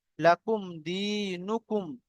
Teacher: ইয়া মাদ্দাকে একালি পরিমাণ টান দিয়ে পড়তে হয়